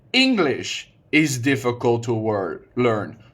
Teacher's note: putting the stress on English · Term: word stress